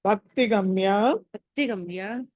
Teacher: భా మళ్ళీ మహాప్రాణం ఒత్తి పలకాలి